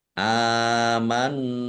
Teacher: jelas amantum Alif fathah berdiri Mad thii p pjang dua harakat nun sukun bertemu dengan huruf ta bacaan Ikhfa dibaca samar-samar